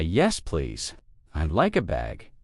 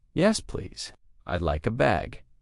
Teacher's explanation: Emphasizing the please for added politeness.